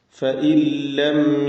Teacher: നൂനും ശേഷം ലാം ഇദ്ഹാം കാമിൽ ഇതാണ് ഇവിടത്തെ നിയമം ഈ നിയമപ്രകാരം നൂനിനെ സക്കനത്തായ നൂനിനെ അല്പം പോലും ഉച്ചരിക്കാതെ ശബ്ദം കേൾപ്പിക്കാതെ ലാമിലേക്ക് പൂർണമായും ലയിപ്പിച്ച് മണിക്കാതെ ഉച്ചരിക്കുക